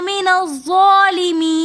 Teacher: من الظالمین کے اندر بھی یا مدہ ہونے کی وجہ سے ہم اس کو ایک الف کی مقدار کھینچ کر پڑھیں گے، پھر یا مدہ کے بعد دوبارہ نون ساکن آ رہا ہے تو وقف کی حالت میں ہم اس کو تھوڑا سا زیادہ کھینچ کر پڑھیں گے